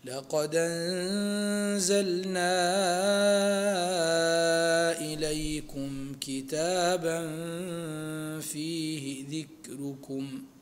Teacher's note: الهمز هنا محقق لقالون ولحفص، وتنقل حركته للدال الساكن قبله بالنسبة لورش، فنقرأ لورش لقد أنزلنا إليكم كتابا فيه ذكركم، هكذا.